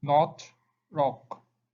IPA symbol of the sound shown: ɒ